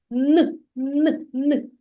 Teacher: коли ми вимовляємо звук н наш язичок торкається верхні зубчиків і повітря зустрічає перешкоду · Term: н твердий приголосний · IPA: [н]